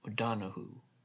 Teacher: She spoke the surname without accent on any syllable.